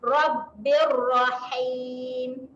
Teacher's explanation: Jaga makhraj huruf ha. Huruf ha huruf kena tekan di tengah kerongkong.